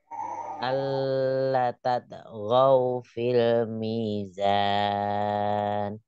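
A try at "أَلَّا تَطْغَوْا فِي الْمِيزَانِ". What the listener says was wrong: Alamnya jangan terlalu lama ditekannya. Alla tatghaw fil mizan. Tatghaw. Kol-kolahnya tatogau. Feel, feel. Mizan, desisnya, Eyang. Mizan.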